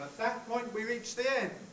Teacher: that's a high head and a high fall